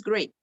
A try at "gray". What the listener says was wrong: Okay, it sounds like you said great with the T on the end. Gray.